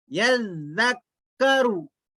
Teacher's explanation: आगे देखिए, या जाल जबर यज, जाल काफ जबर जक, यज़क काफ जबर का, यज़क रा पेश रू, यज़क्करू, यज़क्करू। जाल पढ़ते हो जबान थोड़ी सी बाहर अदा होती